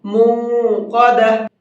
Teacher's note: موقدہ، مقدہ نہیں ہے، اس کے اندر غلطی ہوتی ہے لوگوں سے، اس کو مقدہ پڑھتے ہیں تو مق نہیں پڑھنا ہے، کھینچنا ہے تھوڑا سا۔ موقدہ، اور قاف کو منہ بھر کے پڑھیں گے۔